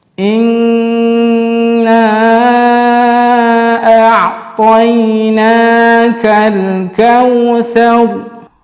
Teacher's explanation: ra yang sebelumnya berbaris fathah, maka di situ dikatakan ra tafkhim, maka kita menebalkan huruf ra